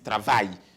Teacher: Two L sound as Y in English.